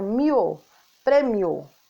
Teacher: Então, o i é a vogal e o o é a semivogal